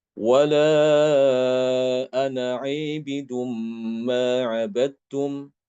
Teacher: Wala ana aibidum ma abadtum. Ini bacaan Imam Hisham mengimalahkan alif pada kata abid dengan abidun